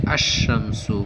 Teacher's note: کہہ رہے کہ ال جب ایسے لفظ پر داخل ہو جس کا پہلا حرف شمسی ہے تو ال کا لام حرف شمسی میں مدغم ہو جاتا ہے، یعنی تلفظ کے وقت لام کی بجائے حرف شمسی کا تلفظ ہوتا ہے